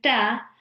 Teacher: the tip of my tongue is touching the gums of my upper front teeth